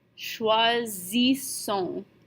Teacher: The first S becomes a Z, and the second set stays as an S.